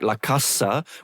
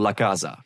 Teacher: an S between two vowels is now a Z sound. It's voiced. a very reasonable change in intervocalic voicing. · a very reasonable change in intervocalic voicing. So like lacasa which I think is old-fashioned/archaic/formmal is now for most people laaza.